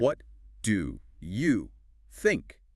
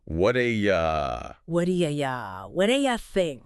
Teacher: that T and the D sound, they kind of mix together, and you becomes more like, yeah.